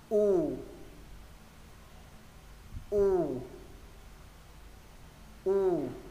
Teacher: Chữ U thứ hai môi thành hình ống và sau đó nâng cuống lưỡi lên